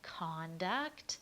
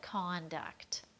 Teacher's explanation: again stressing the con in conduct that means the thing